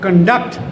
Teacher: When noun, conduct, ਤੁਹਾਡਾ character, ਤੁਹਾਡਾ behavior. And when it is verb, stress shifts to second syllable, conduct.